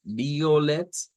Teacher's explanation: No es un diptongo, sino que serían separados